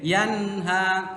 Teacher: nun sukunnya nggak boleh dibaca samar, nggak boleh dibaca panjang. Yanha nggak boleh, harus jelas dan pendek.